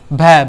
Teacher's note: भै हमारा आता है चौथे स्थान पर, तो चौथे स्थान पे हमारा जो आते हैं वे घोष होते हैं और महाप्राण भी होते हैं